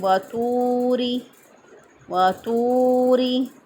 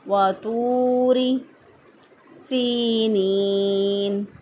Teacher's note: تو کو موٹا پڑھا جائے گا لیکن را کو باریک پڑھیں گے